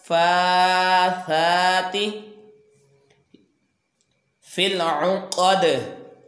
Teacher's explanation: और दाल को यहाँ पे ये ज़ेर को ख़त्म करेंगे और दाल के ऊपर जज़म लगाकर इसको साकन करके कलकला करेंगे